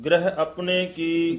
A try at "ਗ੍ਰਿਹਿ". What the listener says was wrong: ਗ੍ਰਹਿ ਨਹੀਂ ਕਹਿਣਾ ਗ੍ਰਹਿ ਰਾਰੇ ਨੂੰ ਸਿਆਰੀ ਲਾ ਕੇ